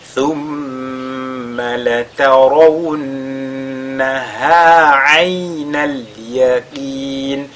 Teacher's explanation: on fait donc al-ghunna sur le mim mushaddada